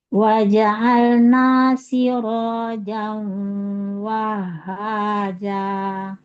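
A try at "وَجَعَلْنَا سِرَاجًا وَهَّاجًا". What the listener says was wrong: Bisa ditebalkan sedikit lagi. Siro.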